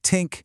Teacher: This sound is consistently replaced by a dental stop. Your tongue presses right up against your teeth, stopping the air completely, almost like a T or a D. So think becomes more like tink.